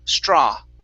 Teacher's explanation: like that okay uh next is straw okay so the aw you're going to end on an ah sound you're adding an oo at the end saying straw instead of an oo it's only an ah straw